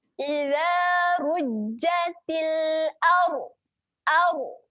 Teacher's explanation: Au dibacakan tebal. Tebal yang macam mana kita muncungkan sedikit mulut.